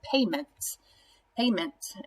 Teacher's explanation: the syllable is accented in the first syllable pay is our base word and it's also the first syllable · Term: accented syllable